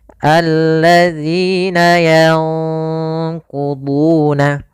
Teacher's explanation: Izhar itu jelas, idgham itu dimasukkan sehingga nun atau tanwinnya hilang. Sedangkan ikhfa itu nunnya disamarkan kepada huruf qaf. Dan qaf termasuk huruf yang tebal, maka ikhfanya juga ikhfa yang kita tebalkan.